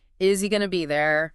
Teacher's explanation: Is links to he. The Z sound at the end of is connects to the vowel sound at the start of he, izzy. Well, maybe not quite izzy, but the each often drops.